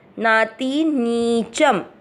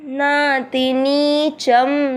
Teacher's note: ती की मात्रा छोटी, लंबा नहीं खींचना, और फिर नी की मात्रा है बड़ी तो उसको लंबा खींचना नीच। शब्द पूरा होने के बाद च पे अनुस्वार आधा म, नाति नीचम।